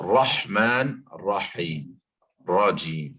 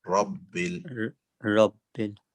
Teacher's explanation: So in the Arabic, raw doesn't go so far back. It's the front of the tongue. Ra is from the tip.